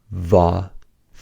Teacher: For fa and its voiced counterpart va, air escapes through the space between the top teeth and the lower lip.